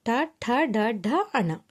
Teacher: దంతాల వెనుక్క పై భాగము నుండి పుట్టేవి మూర్ధన్యములు · మూర్ధన్యములు ఇవి దంతాల వెనుక పైభాగం నుండి పుట్టేవి